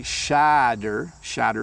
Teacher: they do sound like a D in the middle